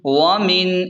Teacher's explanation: ومن اخفا کریں، یہاں اخفا کا غنہ ہوگا